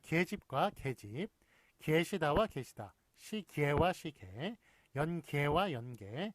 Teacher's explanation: 례 이외의 예는 에로도 발음한다